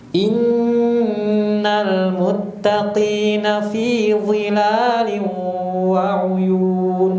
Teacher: kalau tadwir nun tasdidnya agak dipanjangkan tuh gunahnya